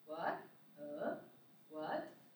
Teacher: Start from low pitch and go up to high. So the tip is, if you have to make your pitch from the lowest as low as you can, and make your pitch go up to as high as you can. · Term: rising tone